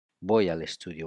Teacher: We link Y and A and then L and E. And all together is voy al estudio.